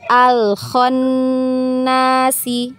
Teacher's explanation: Huruf nun bertasydid maka wajib gunnah ya.